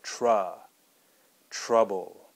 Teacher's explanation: it's kind of a flat u sound or uh some people call it a schwa sound